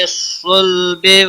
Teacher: صاد حروف مستعلیہ میں سے پر پڑا جائے گا